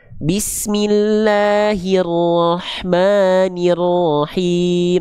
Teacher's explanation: Kenapa bisa nggak jelas vokal I-nya di sana? Karena tengah lidah kita nggak diangkat.